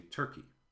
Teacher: And so in received pronunciation, we use the only really central vowel in English, as in turkey. And in America, we color this vowel with R, and we say turkey.